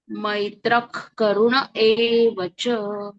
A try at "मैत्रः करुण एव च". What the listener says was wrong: इथे ना मैत्रः असं पॉज नाही घ्यायचा, म्हणजे सलगच म्हणायचं. मैत्रः करुण एव च असं. म्हणजे तो ख वेगळा नाही